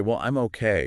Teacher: That fall rise where the pitch dips down and then comes back up a little. >> It can signal things like uncertainty, doubt, maybe politeness or reservation.